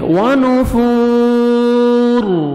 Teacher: ونفور, فا واو مدہ 1 سیکنڈ آپ نے فا کو کھینچنا ہے, اور را کو جب سٹاپ کریں گے را ساکن ہو جائے گا, را کو پر کریں گے کیونکہ را سے پہلے ساکن سے پہلے پیش ہے